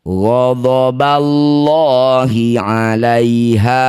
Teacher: Lafaz Allah didahului fathah, lamnya baca dengan tafkhim atau tebal, kita ganti jadi lo.